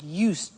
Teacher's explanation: I said used with a T sound.